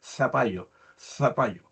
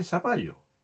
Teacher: La Z se pronuncia con el ápice de la lengua entre los dientes